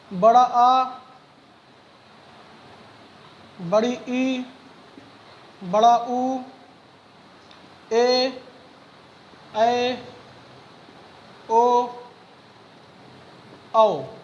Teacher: तो हमने अभी देखा ह्रस्व स्वर, अब हम दूसरा भेद देख रहे हैं इसका दीर्घ स्वर। तो दीर्घ स्वर वह स्वर होते हैं जिनके उच्चारण में हमें ह्रस्व स्वर से ज्यादा समय लगता है